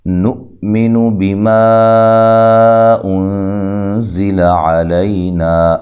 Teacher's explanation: الف مدہ ہے، لو و مدہ ہے، نؤمن بما انزل علینا، حمزہ کو جھٹکے سے ادا کرنا ہے، لمبا نہیں کرنا ، بیما ادھر جو ما پہ مد ہے یہ مد جائز